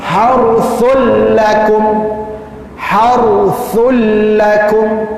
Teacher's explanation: Har memang tak boleh dengung pun, sebab huruf ra dengan huruf lam tak boleh kita buat dengung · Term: tak ada dengung